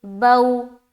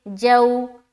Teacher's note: با واو زبر بو، واو ساکن سے پہلے زبر ہے، واو لین ہوگا، واو لین کو نرم آواز کے ساتھ جلد اور معروف پڑھیں گے، جیسے بو، اسی طریقے سے جو، واو ساکن سے پہلے زبر ہے، واو لین ہوگا، واو لین کو نرم آواز کے ساتھ جلد اور معروف پڑھیں گے، جیسے جو۔